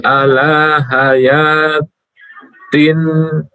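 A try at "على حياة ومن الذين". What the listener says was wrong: Ala hayatiwa. Ada ke wawu dimasukkan. Kan termasuk apa? Idgham bigunnah.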